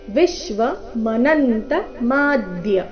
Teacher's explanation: ವಿಶ್ವನಲ್ಲಿ ವಿ ಮೇಲೆ ಆಘಾತ, ಮನಂತ ನ ಮೇಲೆ ಆಘಾತ